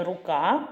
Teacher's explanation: у першому слові рука перший звук приголосний р твердий